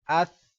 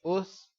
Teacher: ثا پر سیٹی کی آواز نہیں ہے، اس نہیں پڑھیں گے